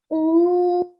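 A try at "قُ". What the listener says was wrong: Beautiful. Really nice Qaf sound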